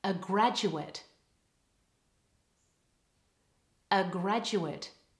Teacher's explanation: and all the stresses on the first syllable ready to graduate the noun has a schwa in the second syllable with all the stress on the first syllable